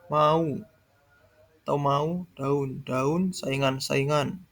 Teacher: Berdasarkan dengan contoh di bawah ini, kata-kata berikut ini bukan diftong, melainkan vokal rangkap, karena masing-masing vokal-vokal terdapat dalam suku yang berbeda